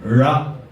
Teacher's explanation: நாக்கை நன்றாக உள்ளே மடித்து வைத்து உச்சரிக்க வேண்டும் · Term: சிறப்பு நகரத்தை